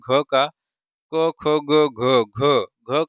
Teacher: घ का जो उच्चारण स्थान होता है कंठ होता है